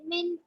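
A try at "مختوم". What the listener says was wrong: Makhtumin Baumada. Stretch one finger. Now, Khwa is a fat letter. Make it fat. Makhtumin.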